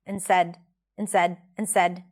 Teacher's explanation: notice how we dropped the D here, not end said and said.